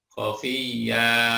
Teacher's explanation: Kalau berhenti dibaca khafiyya, ya, disebut mat. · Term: Mat iwat